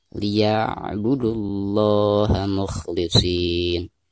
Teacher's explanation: Huruf hijaiyah yang berharkat domah di sini huruf dal. Maka cara membaca lam jalalahnya itu harus ditebalkan